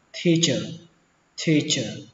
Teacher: Giáo viên, giáo viên thì từ này các bạn cũng biết rồi, đọc là teacher teacher, bắt đầu bằng âm tờ nhưng mà phát âm là thờ, teacher teacher.